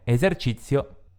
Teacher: una S che ha il suono sonoro, perché si trova tra due vocali